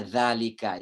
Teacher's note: mad thabi'i panjangnya dua ketukan misalnya Zalika itu dua ketukan